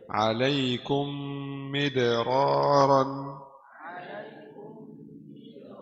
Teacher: Mim bersukun dimasuk dalam mim berharakat kasrah dengan ghunah dua harakat. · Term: idghamun